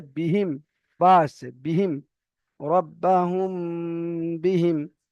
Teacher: মিম সাকিনের পরে যদি বা আসে তাহলে মিম সাকিনকে এক আলিফ পরিমাণ গুণনা করে পড়তে হয় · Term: ইকফায়ে সাফাবি